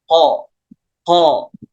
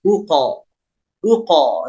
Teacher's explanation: Terus walaupun qalqalah sugro, namun bunyi pantulannya harus jelas. Nah, untuk qalqalah huruf qaf, memantulnya dekat dengan suara o. Jadi kalau kita latihan huruf qalqalah, tidak mengapa kita ucapkan dulu bunyi o-nya seperti ko, baru pantulkan uko.